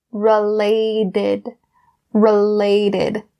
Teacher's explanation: the T sound in related is changed to a D because it's in between two vowel sounds